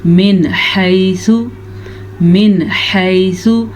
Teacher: نون ساکن کے بعد اس وقت ہمارے پاس حروف حلقی میں سے حا ہے، تو ہم نون ساکن کو ظاہر کر کے بغیر غننے کے پڑھیں گے. من حیث، من حیث، حا کے مخرج کا آپ نے دھیان بھی رکھنا ہے.